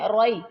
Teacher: روئی بیم میم ما، روئی بیم، اچھا کامن مسٹیک رئی بیم پڑھتے ہیں، رئی بیم، رئی نہیں روئی، را موٹا روئی